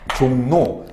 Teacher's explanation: 앞에 오는 비음의 영향을 받아서 뒤에 오는 리을이 니은으로 바뀌어서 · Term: 비음화